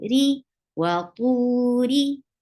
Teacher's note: Ra is light here because whenever ra is with kasra, it has a light sound.